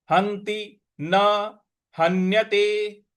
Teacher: ह के बाद जो आधा न है उस पर हमको आघात देना है